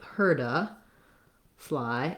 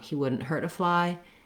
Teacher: my heard is going to be longer than he wouldn't hurt a fly